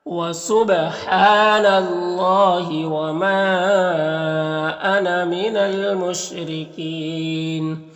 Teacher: اللہ کے لام سے پہلے نون کے اوپر زبر ہے تو اللہ کے لام کو پر پڑھیں گے · را کے نیچے زیر اور را کو باریک پڑھیں گے